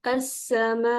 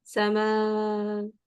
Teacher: आखिर में आवाज़ हमज़ा की हमने नबर कर दिया, हमने थोड़ी-सी ऊँची करके हमने पढ़ा ताकि सुनाई देने वाले को ऐसा ना लगे कि समा।